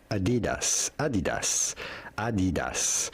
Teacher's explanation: In German they would say Adidas. Adidas without stressing on any syllable in particular.